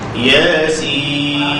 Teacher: Ya kita baca 2 harakat, sin kita baca 6 harakat, tidak ada tawar-menawar.